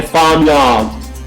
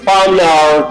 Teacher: in British accent, you don't pronounce the R. Usually it is dropped